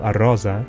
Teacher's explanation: If the phone is added to the beginning of a word, it's called prothesis. The Sardinian example arosa adds a prothetic a.